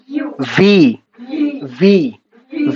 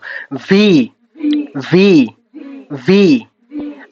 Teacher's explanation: উপরের দাঁতটা নিচের ঠোঁটের পেটে লাগবে, মাঝামাঝি লাগবে, এবং দাঁতের ফাঁকা জায়গাগুলো দিয়ে হচ্ছে বাতাস বের হবে। হ্যাঁ, যখন আমরা বলবো ভি ভি ভি।